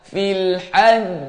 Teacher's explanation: kita kena delaykan qalqalah. Fil haj lambat keluar. Lambat keluar. Kita tangguh dulu bunyi.